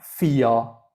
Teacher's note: you don't really pronounce the r at the end